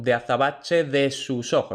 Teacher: la preposición de tiene esta de aproximante porque va entre dos vocales. Entonces ese es uno de los muchísimos contextos en los que es aproximante, no es oclusiva.